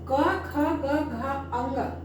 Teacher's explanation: इसका उच्चारण स्थान है कंठ अर्थात इसका उच्चारण कहां से हो रहा है कंठ से हो रहा है